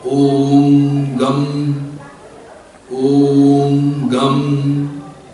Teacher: The last syllable is M. The last syllable progresses into a nasal sound Bindu and is further pulled into a lengthy sound called Nada, which unites all 3 parts into the mantra.